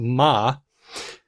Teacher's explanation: the bilabial low vowel combination, we're talking about ma